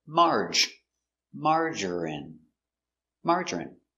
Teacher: three syllables stress on a first syllable